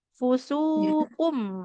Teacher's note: Karena domah sin dommah bertemu dengan wau di depannya, maka di situ harus panjang dua harakat saja.